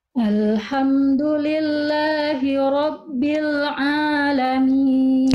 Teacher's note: kuatkan sedikit lagi ainnya bunda dari Tengah tenggorokan